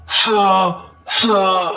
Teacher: ہا کے اوپر کھڑی زبر ہے، ایک الف کی مقدار کھینچ کر پڑھیں گے، ہا کا لفظ حلق سے ادا ہوگا۔ حروف توحجی کے اندر ہم پڑھتے ہیں جیم ہا خا، جیم ہا خا، اس طرح آپ نے نہیں پڑھنا ہا، تو اس طرح آپ نے پڑھنا ہے ہا ادا کرنے کی کوشش کرنی ہے حلق سے۔